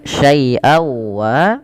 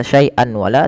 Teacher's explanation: Cara membacanya, masukkan suara tanwinnya pada lafal syai'an kepada huruf waw dengan kita kenal dengan istilah idgham, memasukkan bigunah.